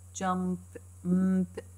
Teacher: m and p, both are bilabial, both are produced by lips.